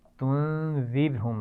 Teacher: रा साकिन है और उससे पहले ज़ेर है इसलिए रा को बारीक पढ़ना है · तुन्ज़िरहुम के नून पर भी गुन्ना होगा और इसमें रा बारीक पड़ी जाएगी।